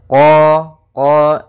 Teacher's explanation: makhraj daripada huruf q yaitu dari pangkal lidah kita pangkal lidah sehingga huruf qnya harus dibaca dari pangkalnya supaya lebih jelas pangkal · Istia maka lafal qnya lidah pangkal lidah kata terangkat qo kemudian tidak dimonyongkan bibirnya tapi dibuka saja untuk menyempurnakan daripada fathah huruf qnya